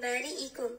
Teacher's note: بریئکم میبینیم که حرف با اینجا زبر داره، بعد از الف ذکر شده، مد اصلی است و حرف را اینجا باریک خوانده میشه به خاطر که زیر داره